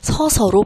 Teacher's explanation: 그래서 서어서라고 발음하지 않고이 어가 탈락을 하여 서서로 발음이 되고 있는 거예요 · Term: 모음 탈락